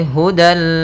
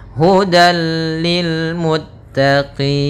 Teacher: Maka tanwin dia akan dimasukkan kepada huruf lam, tapi tidak boleh ditahan, tidak boleh hudal, akan tetapi hanya idgham saja, dan dia termasuk idgham kamil yang sempurna. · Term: idgham bila gunnah